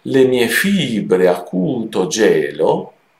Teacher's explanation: Ecco, vedete che qui, avendo un verso che non ha l'accento all'inizio, ma il primo accento ce l'ha solamente sulla terza sillaba